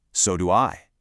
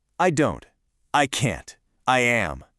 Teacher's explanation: let your intonation fall gently on that stressed helper verb, it projects this wonderful natural confidence.